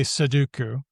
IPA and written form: səduku (soduku)